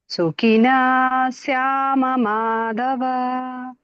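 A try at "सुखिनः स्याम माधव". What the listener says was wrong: ಸುಖಿನ ಅಂತ ಕಟ್ ಮಾಡ ಸುಖಿನ ಪೂರ್ತಿ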